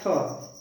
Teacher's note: उच्चारण स्थान थ जो है दंत से बोलते हैं